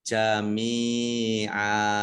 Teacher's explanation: Nah, ini adalah disebut dengan istilah mat iwad, ya. Mat iwad fathah tanwin alif itu kalau waqaf dibaca fathah panjang 2 harokat, namanya mat iwad jami'a.